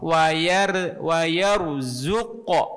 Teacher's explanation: Yang pertama qaf wa yarzuq. Nah, itu qafnya mantul qalqalah dan pantulannya ke o bukan ke e, tidak wa yarzuq, bukan ke tapi ko ya.